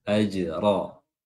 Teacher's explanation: Nah, huruf ra tebal ya karena dia berharakat fathah. · jim sukun di sini qalqalah ya, qalqalah sughra, dan qalqalahnya tipis karena huruf jim tipis.